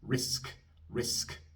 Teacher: La K es sorda, así que soplo un poco de aire después.